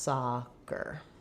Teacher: The IPA for soccer, you'll see it as first syllable stress